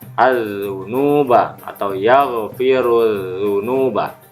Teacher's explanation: seharusnya hukum lam bertanda sukun tapi melebur kepada huruf za, maka alif lamnya tidak dibaca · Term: alif lam samsiah